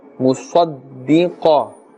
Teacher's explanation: Swad is part of the huruf musta'aliyah. Qaf is also part of the huruf musta'aliyah, and therefore we're pronouncing them with a thicker tone, a full mouth.